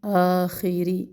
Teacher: آخری اب خوا موٹا حرف ہے، زیر کے ساتھ ادائیگی بھی ہے اس کی موٹی ہوگی